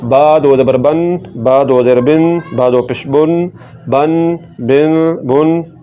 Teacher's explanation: با کو پڑھیں گے دونوں ہونٹوں کے تاری حصے کو ملاتے ہوئے